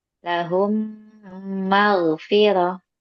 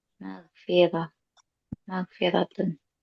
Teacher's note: tahan dulu gunahnya dua harakat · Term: idgam mimi